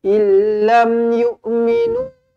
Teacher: nun kosong bertemu dengan lam. Bila jumpa dengan lam, tak payah dengung.